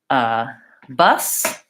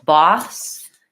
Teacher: So bus is vowel schwa and an S, and boss is vowel ah and an S. So the difference there is an sound, like bus, and an sound, boss.